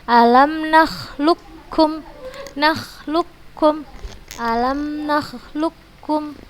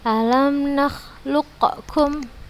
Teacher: Langsung sempurna kita masukkan huruf qafnya ini ke huruf kafnya. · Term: idgham kamil